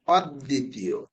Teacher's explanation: ব থাকার কারণে দ দুইটা হয়ে গেছে,